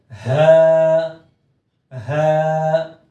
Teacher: ہا کو پڑھتے ہوئے حلق سے ہی آواز آتی ہے، تھوڑی سی بھاری آواز نکلتی ہے